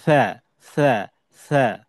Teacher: একদম নরম করে পড়তে হয়, জিহ্বার আগা তার বরাবর উপরের দাঁতের সাথে লাগবে। জিহ্বার আগাটা লাগবে উপরে।